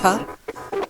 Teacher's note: P P is what we call an expletive. It sort of like an explosion of air comes through your lips. P. And B is softer, less air, and a more relaxed mouth.